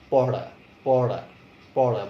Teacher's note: জিভটা একটু উল্টে বাতাসে চাপ দিতে হবে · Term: মূর্ধন্য ধ্বনি